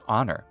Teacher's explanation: we don't pronounce the H in honor